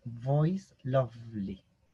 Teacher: suena como la F que vibra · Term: La V